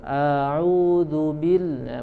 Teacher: Misalkan dalam bacaan ta'awudz ya, a'udzu billah, a-nya tidak langsung berpindah ke huruf yang setelahnya, tapi dipanjangkan dulu. A'udzu billah, padahal harus langsung a'udzu billahi minasyaiton ya. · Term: isba'ul harokat